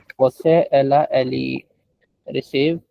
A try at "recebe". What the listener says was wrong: Now you're just saying the English word receive. It's not receive. It is receber.